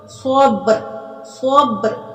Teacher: صبر صبر صاد کو مٹھا پڑھنا ہے، با پہ کلکلا کرنا ہے